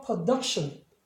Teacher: 더 이상 you라고 발음을 하면 안 되고 이제는 어로 바뀝니다. 그 이유는 뒤에 자음이 두 개가 만들어졌기 때문에.